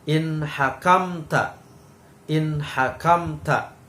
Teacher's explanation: nun sukun bertemu dengan hak maka cara membacanya harus jelas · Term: idhar